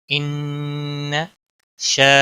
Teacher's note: الف مدہ ہے، 1 الف کے برابر کھینچ کر پڑھنا ہے۔